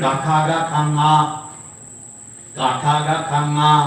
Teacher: തൊണ്ടയിൽ തടഞ്ഞിട്ട് പറയുന്ന 5 അക്ഷരങ്ങൾ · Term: കണ്ഠ്യം